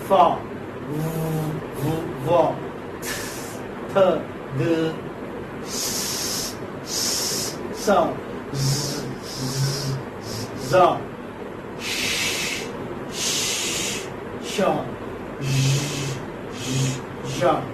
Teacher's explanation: they are sounds made by forcing breath out through a narrow opening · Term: fricatives